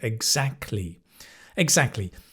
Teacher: The T kind of disappears, the sound.